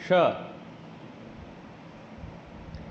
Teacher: ऊपर वाले ये माउथ के ऊपर वाले हिस्से को हम लोग तालु बोलते हैं, इसलिए इसको तालव्य श बोलते हैं, ठीक है। तो जीभ हमारा ऊपर लगता है तालु से, ठीक है, राइट, तब बनता है श